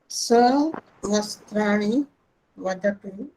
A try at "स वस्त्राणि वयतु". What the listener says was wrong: वदतु नहीं, वयतु।